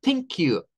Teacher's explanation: Ahí hacemos el sonido sin vibración para la TH.